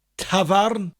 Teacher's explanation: with that lovely rolling r in welsh